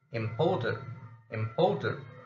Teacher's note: we must lay emphasis on the second syllable of such a word